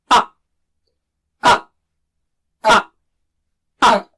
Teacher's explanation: तो आ जो है ना वो झटके से शुरू करना है। आउजू नहीं आउजू नहीं आ और उसको खींचना भी नहीं।